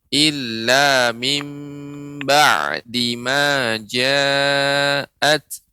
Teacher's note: ainnya harus lebih dilembutkan lagi, ya, tidak syiddah